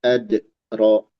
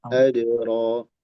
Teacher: nanti coba dalnya jangan jedak jangan ad ro tapi langsung adro